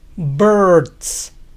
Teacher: imaginen que no pronuncian ninguna vocal entre B y R. Birds.